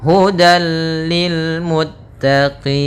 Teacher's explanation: Ya, hudal lil muttaqin, langsung ke lam dan tidak ditahan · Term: idgham bila gunnah